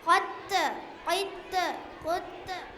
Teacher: جن کا مجموعہ کتب جدین ہے. جب ان پر جزم ہو تو ان کو پڑھتے وقت ان کا مخراج ٹکر کھا کر الگ ہو جاتا ہے. ان کے علاوہ کوئی جزم والے حرف پر خلخلہ نہ ہوگا.